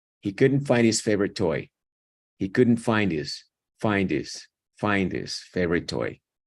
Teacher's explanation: pegan esta D a esta I y se comen la H